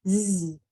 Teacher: the whole thing this s is making its vibrating sound z s has two sounds voiceless and voiced it's making its voiced sound that sounds like a z